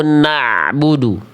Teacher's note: bunyi ainnya yang asalnya Hamzah nih di bawah jadi naik ke tengah tenggorokan, naik sedikit ke atas ngeden. Saya selalu bilang mengibaratkan kalau pengin ainnya tepat, coba lebih rasain.